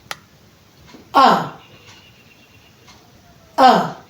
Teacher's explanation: this is a relaxed central sound.